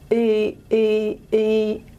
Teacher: It's E, E, E. So nice and central, unrounded. The tongue's high, but it's somewhere in the middle of the palatal and velar region. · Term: high central unrounded